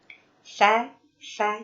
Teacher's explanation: karakter yang menempel pada huruf sa itu adalah tarkik atau tipis. Sa. Jadi tidak boleh fo, tapi sa tipis.